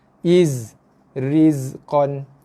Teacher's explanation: Boleh rasa lidah kita sentuh belakang gigi bawah So, iza, iz. Okay, zai bila baris mati dia ada bunyi z. Bunyi desiran.